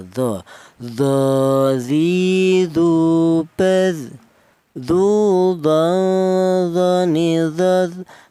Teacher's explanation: Untuk huruf do ini keluarnya huruf berasal dari ujung lidah menyentuh ujung gigi seri atas ya